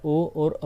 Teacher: ओ plus औ, कंठोष्ठ, ये स्थान राइट है। कंठोष्ठ से ही इन दोनों की ध्वनि निकलती है, ओ और औ की।